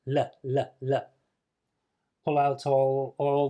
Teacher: further forward to the position for the th which is so you make the L with your tongue touching your top front teeth